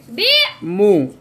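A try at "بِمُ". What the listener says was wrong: नहीं बी क्यों करते हो? सीधी आवाज रखो बी मु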